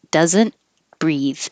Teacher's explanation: the th is voiced